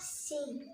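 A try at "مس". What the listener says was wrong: पहले मीम को पढ़ना है फिर सीन की आवाज।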